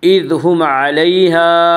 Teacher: میم ساکن کے بعد میم اور با کے علاوہ کوئی اور حرف آئے تو وہاں پہ اظہار شفوی ہوگا، یعنی میم کو ظاہر کر کے پڑھیں گے۔